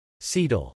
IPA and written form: sɛtəl (cetyl)